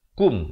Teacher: Jangan baca lama'akum. Kita baca kaf baris depan bunyi ku. Bukan bunyi ko. Jadi baca K-U-M.